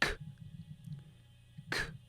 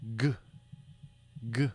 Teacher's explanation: If you put your hand on your throat and say k, k, you feel no vibration. But if you say g, g, you feel your vocal cords vibrate. When your vocal cords vibrate, that's voiced.